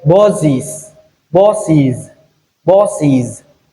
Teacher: So s stays voiced after vowel e